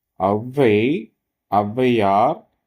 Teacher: சொற்களில் முதலில் வரும் பொழுது தனக்குரிய இரண்டு மாத்திரை அளவிலிருந்து குறைந்து ஒலிக்கும் குறைந்து ஒன்றரை மாத்திரை அளவை ஒலிக்கிறது இவ்வாறு குறைந்து ஒலிக்கும் அவகாரம் அவகார குறுக்கம் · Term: அவகாரக் குறுக்கம்